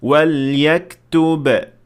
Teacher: if you stop at the first word, you will apply Qalqalah normally, since in that case, the ba is not fused with anything yet. But once you keep on reading, you will fuse it.